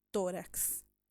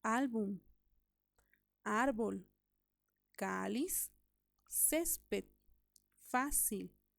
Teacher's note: lleva el acento tónico o la sílaba tónica en la penúltima sílaba